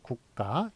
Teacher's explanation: 무성음과 무성음이 만났을 때 뒤에 있는 게 된소리가 된다라는 게 바로 한국의 그 된소리 대기 규칙인데 이런 경우에는 요 가를 예, 저기 된소리 대기를 반영하지 않고 예, 그냥 표기대로 적기로 했습니다.